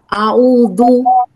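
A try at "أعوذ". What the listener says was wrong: হ্যাঁ, দু, কিন্তু আপনার জিভটা বের হয় না, আরেকটু বের করেন। আমারটা শুনেন, আউযু। জিভটা বের করে ধরে রাখবেন।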